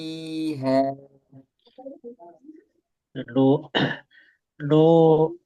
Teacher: ketika huruf nun, nun kan ee keluar dari hidung ya. Jadi pasti di awal dia masuk hidung. Nah, tapi ketika panjangnya diusahakan jangan masuk hidung.